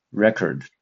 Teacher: so the stress is on the first syllable